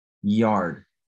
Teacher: La y no se pronuncia y como nuestro español, sino es una i, como la i de iglesia, la i latina, yard.